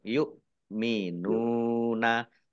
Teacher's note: Nun domah wawu sukun mat tobi'i panjang 2 harokat.